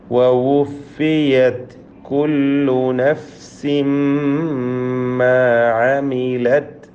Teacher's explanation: വവുഫിയത് താഇൻ്റെ ഹംസ് ശ്രദ്ധിക്കണം.